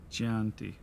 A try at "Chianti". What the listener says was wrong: Chianti. It's Italian. The CH is pronounced as a K.